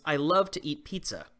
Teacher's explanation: you stress the words love eat and pizza to emphasize the meaning of the sentence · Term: stress on important words